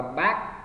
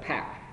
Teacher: Âm bờ thì không bật hơi, đọc là back, còn âm p phải bật hơi là pack, đọc là backpack.